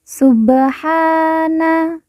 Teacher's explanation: Ba sukun kita baca pantul karena merupakan huruf qalqalah. · kita baca panjang dua harakat karena di atasnya terdapat Alif kecil yang merupakan tanda baca panjang dua harakat [Musik] subhanalladzi Na langsung